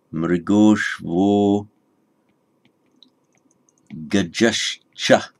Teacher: Visarga followed by the unvoiced cha, the unvoiced palatal, that becomes shcha, sh, cha.